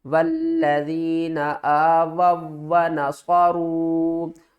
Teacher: اوپر چھوٹی مد، تو اس کو ہم نے 3 الف کی مقدار کھینچ کر پڑھنا ہے۔ اور اب واو ساکن سے پہلے پیش ہے، یہ حروف مدہ بھی بن گیا ہے، اور اب ہم اس واو کو اس کے ساتھ ملا کر پڑھیں گے۔